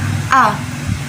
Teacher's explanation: alif itu makhrajnya atau tempat keluarnya itu ada di tenggorokan bagian pangkal.